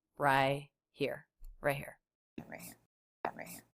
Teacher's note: I don't hear a t i don't even hear a stop T it's so mumbled she just says Rye here right here right